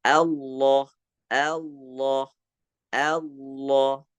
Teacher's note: posisi lidah pun berubah saat contohnya kita melafalkan lafaz jalalah maka kita membacakan dengan menebalkan huruf lam jadinya sehingga sudah mendekati kepada huruf do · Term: lam tafkhim